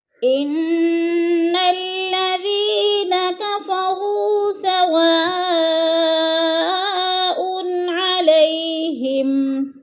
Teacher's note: ان کی نون مشدد ہے، سختی سے جما کر پڑھیں گے